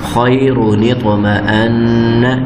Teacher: خوا زبریہ خی را پہ شروع خیرو، نون زیر طا نط، میم زبر ما نطم، حمزہ زبر نون ان، نطم ان، نون زبر نا، خیر نطمئن۔ طا ساکن ہو تو طا کے اوپر قلقلہ ہوتا ہے تو یہاں پہ ہم قلقلہ بھی ساتھ کریں گے